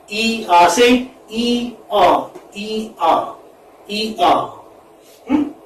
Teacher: it's a glide from centrally front unrounded vowel, which is between close and half close, to central unrounded vowel between half close and half open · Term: diphthong